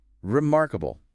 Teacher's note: second syllable mark gets the main hit